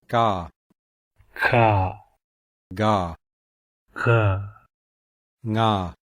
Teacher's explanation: The gutturals are formed at the back of the mouth, and these are also called velars.